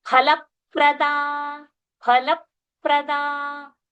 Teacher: So the lips are going to join twice consecutively. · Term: oshtha sounds